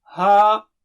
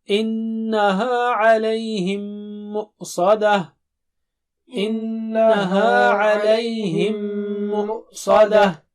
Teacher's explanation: پھر نون پر غنہ ہے. ناک سے آواز ڈبل حرکت